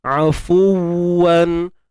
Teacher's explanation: Nak dapatkan sempurna untuk bunyi waw bersabdu ni tuan-puan, muncung bibir mulut betul-betul.